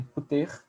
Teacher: o U em puter também é esse U que se insere só para facilitar o som, o U epentético